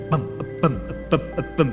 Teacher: Huruf mujadid itu harful infijar. Infijar itu yang menekan di dalam, lantas diledakkan keluar.